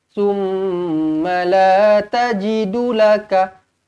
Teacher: Dengungkan dua harokat. Mim sabdu wajibul gunnah. Kemudian rentak dia macam ni.